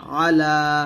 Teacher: আলা লা তে একটা টান হবে